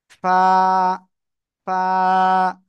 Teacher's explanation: নিচের ঠোঁটের পেট উপরের দুই দাঁতের আগায় লাগাতে হবে এবং হালকা বাতাস বের করতে হবে।